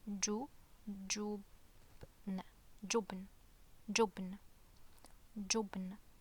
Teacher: Notice how there is no vowels after the ba, it's just the ba sound.